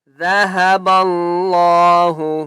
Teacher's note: اللہ کا نام موٹا کر کے پڑھیں گے کیونکہ اس سے پہلے با کے اوپر زبر ہے